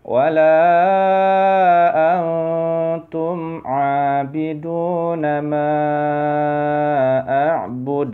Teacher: D, mantul ya. Ada huruf qalqalah di akhir ya.